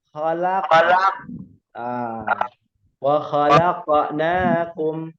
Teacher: Kalau huruf qaf itu tebal, seperti wa khalaqa. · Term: qalqalah itu harus tebal